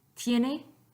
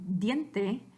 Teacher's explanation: The difference between the two is that T, sonido sordo, your vocal cords don't vibrate, and D, sonido sonoro, your vocal cords do vibrate.